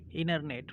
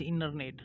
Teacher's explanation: T is not pronounced generally between vowel and consonant, so it is called internet, right.